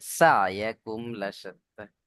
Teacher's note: সিন আছে, সিটি মতো আওয়াজ হবে